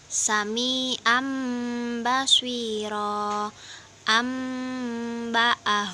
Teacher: Cara membacanya yaitu mengganti nun sukun dengan mim sukun dan disertai gunnah. Cara membacanya 2-3 harokat. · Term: Iklab